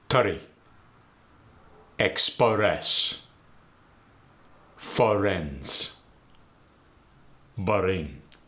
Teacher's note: A lot of times in the Arabic dialect, a vowel gets thrown in there, usually before an R.